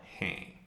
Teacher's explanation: there's the nasalized sound in the end, so if you hold your nose, hey, your nose should vibrate.